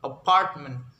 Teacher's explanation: Okay, for introduction, stress pattern 2 is the primary stress is on the second syllable, and all other syllables are unstressed